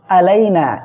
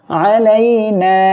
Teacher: আমরা আইনটা গলাটা চেপে উচ্চারণ করব